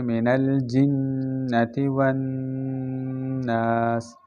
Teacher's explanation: من الجنۃ میں نون مشدد ہے، نون اس پر ہمیشہ غنہ ہوتا ہے